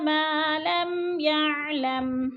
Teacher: علم الانسان، سا کو تھوڑا سا کھینچ کے، علم الانسان ما لم يعلم ما کو بھی کھینچ کے پڑھیں گے، الف خالی سے پہلے میم کے اوپر زبر ہے، الف مدہ کو 2 حرکات کے برابر کھینچ کر پڑھنا ہے